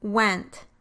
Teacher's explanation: You round the lips and move the tongue towards the velum at the same time. · The first sound in the word went is doubly articulated, so it involves both a bilabial articulation and a velar articulation.